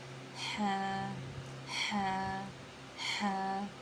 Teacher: ہا کا مخرج ہے وسط حلق سے حلق کا درمیان، یعنی کہ حلق کے بیچ والا حصہ، ٹھیک ہے، اس سے ہمارا ادا ہوگا ہا، ہا، ہا، ہا۔